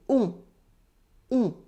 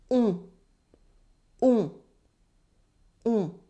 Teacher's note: It's like O, but nasal and the tongue at the back of your mouth.